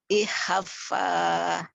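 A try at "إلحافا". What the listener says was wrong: Bukan. Lam, itu pakai lam. Ilhaf. Hanya panjang. Ilhafa.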